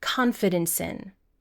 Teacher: So the real final sound is S and we want to connect this sound to the word in. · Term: connected speech